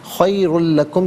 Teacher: خیر میں ناظرین را پر دو پیش کی تنوین ہے، را کو پر کر کے پڑھیں گے، دو پیش کی تنوین کو لام کے ساتھ ملائیں گے، لام کی آواز کو ادا کیا جائے گا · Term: یرملون کا قاعدہ